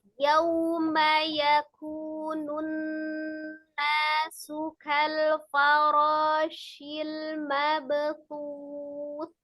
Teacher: Faroronya 2 harokat, shil mabthuth, hati-hati ada ba sukun kolkola.